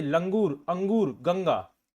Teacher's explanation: अनुस्वर में याद रखिएगा ऊपर सिर्फ एक बिंदी आती है। यह स्वर के बाद आने वाला व्यंजन है जिसकी ध्वनि नाक से निकलती है